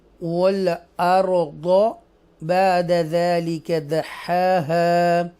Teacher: را کو بولڈ پڑھیں گے، ضاد کو بھی بولڈ پڑھیں گے